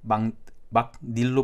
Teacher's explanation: 여기 있는 니은이 첨가돼서 발음이 되죠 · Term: 니은 첨가